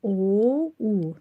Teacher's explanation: Soyuq sözündə o, u dodağımız bir qədər irəli çıxdı. dairəvi formalıdır. Bəli, soyuq sözü sözündə dodaqlanan saitlər iştirak etmişdir.